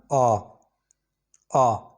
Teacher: विव्रत का मतलब है ओपन, जहाँ पे आपका मुंह जो है खुला होगा। जिन स्वरों को उच्चारण में आपका मुंह खुला होगा उसको बोलते हैं विव्रत स्वर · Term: विवृत स्वर